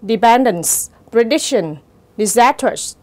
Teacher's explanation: dependence, prediction, disastrous, nó có dấu nhấn ở âm tiết thứ hai